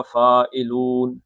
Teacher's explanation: انا لفاعلون، فا دو حرکتیں ہو گئی، یہ مد بدل ہو گیا. فاعلون، لو دو حرکتیں تھی مد اصلی تھا لیکن نون عارضی طور پہ ساکن ہو گیا تو اب اس کو 5 حرکتیں آپ لے کے جا سکتے ہیں